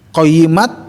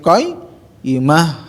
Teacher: Nul masuk ke nul, alif lam qamariyah qayyimah. Nah, jadi bukan qayyimat tapi qayyimah, ta marbutah diwaqaf menjadi ha